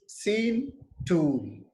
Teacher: The quality of the vowel sound doesn't change in the words seen, tool, E sound, U sound. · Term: single vowel sound